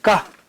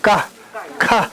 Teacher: 你要念卡的时候，有你的气就会出来啊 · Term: 送气